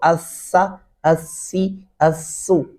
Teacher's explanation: बात खास ध्यान में रखनी अस सा मैंने आपको बताया था दोनों दांतों के दरमियान जबान की नोक आ जाएगी और सा नरमी से अदा होगा